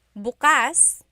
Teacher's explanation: If you say bukas, the emphasis is on the second syllable. That means open.